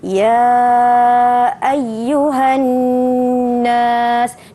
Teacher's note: nun yang ada tanda syaddah ataupun sabdu mestilah didengungkan. Jadi kita baca ya ayyuhan nas, dengungkan.